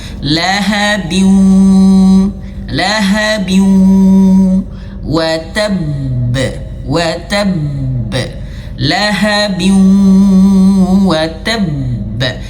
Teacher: wajib dia masukkan ke dalam hidung. Sengau harus sengau. Wajib sengau.